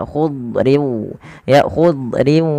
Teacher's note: Padahal huruf dot tidak punya sifat qalqalah, tapi dia punya sifat yang pertama isti'la, yaitu pangkal lidah terangkat dan dia menebal.